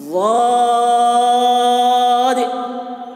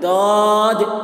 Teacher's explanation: ज़बान का किनारा और डाढ़ के तरफ लगता है, यानी जो किनारे के दांत है उधर जब दांत के ज़बान के किनारे को लगाते हैं तो इसकी अदायगी होती है वाद की।